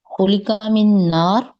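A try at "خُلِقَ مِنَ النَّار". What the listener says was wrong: होलिका मिन नार या मिनन नार, आमतौर पे अगर कुरान में देखें ना तो उसके साथ अलिफ अल लगा हुआ है नार के साथ ना, क्योंकि मेरे ख्याल में शायद किसी खास आग से उसको पैदा किया गया।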